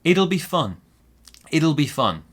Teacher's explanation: We stress a little bit on it, but mostly it's on the adjective fun that comes later.